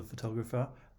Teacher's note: in the first and last syllable photographer the vowel sound is a schwa